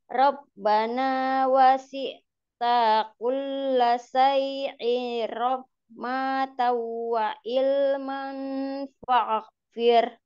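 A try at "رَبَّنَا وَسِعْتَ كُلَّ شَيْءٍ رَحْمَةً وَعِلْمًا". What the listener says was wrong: Ya, wa ilma saja berhentinya, Kemudian tadi kepanjangannya, kepanjangan, maknya tadi kepanjangan. Ulang lagi,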